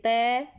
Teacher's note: जीभ कहाँ टच हो रही है, दांतों पे, तो ये कौन से हो गए, दंत्य हो गए